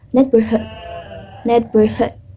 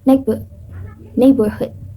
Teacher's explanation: In American accent, pronounce the R clearly, while in British accent does not. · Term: R sounds